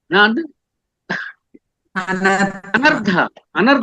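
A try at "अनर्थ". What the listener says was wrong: అన్ రావాలి అన్ అర్థ అనర్థ అనర్థం రా అంటాం కదా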